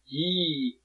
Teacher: 폐모음은 입이 가장 좁아진 상태로 발음되는 모음